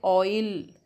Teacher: तो ऑ से ई में शिफ्ट होते हैं, हम मूव करते हैं, तो इसीलिए इसको डिप्थॉन्ग्स को ग्लाइडिंग साउंड्स भी कहते हैं।